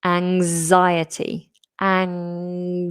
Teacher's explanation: And then we have this Z sound. So it's a vibrating voiced Z.